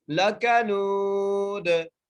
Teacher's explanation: لام کے اوپر زبر ہے, کاف کے اوپر بھی زبر ہے, نون کو ایک الف کی مقدار کھینچ کے پڑھنا ہے. دال کو ہم ساکن کر دیں گے وقف کی صورت میں, اس لیے یہاں پر قلقلہ ہوگا